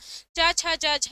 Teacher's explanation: च छ ज झ जो है स्पर्श संघर्षी व्यंजन कहलाता है